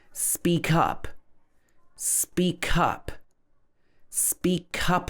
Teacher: So here we stress the word up.